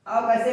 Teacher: ओ और औ का उच्चारण स्थान क्या है? कंठ और ओष्ठ है।